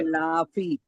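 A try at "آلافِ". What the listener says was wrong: बड़ा वाला आ, ये ना खींचने वाला, क्या आप लोग बोलते हैं, मद है।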